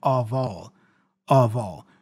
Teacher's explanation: the F is pronounced as a V, which then joins with the O, the vowel A there.